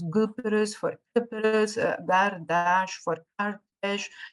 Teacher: this voicing takes place usually in a word initial position